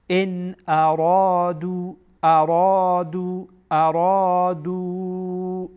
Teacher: اینجا این ارادو، اینجا مد منفصل هست. ارادو به اندازه 4 حرکت یا 4 الف آن را طولانی میکنید